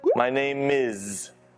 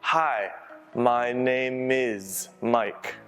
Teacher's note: name▁还可以和后面的▁is▁连读